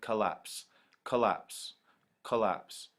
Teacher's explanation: If you listen to it, it's the second part that is stressed, collapse, collapse, collapse. It's the apps part which sounds heavy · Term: I am